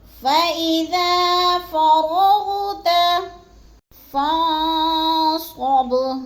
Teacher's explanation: فإذا کو تھوڑا سا لمبا کرنا ہے، الف مدہ ہے